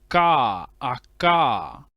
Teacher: this K is classified as a voiceless velar plosive